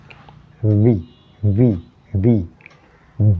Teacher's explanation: V, mark my lips. My teeth touches slightly the lower portion of the lip. V. B and V are differently pronounced.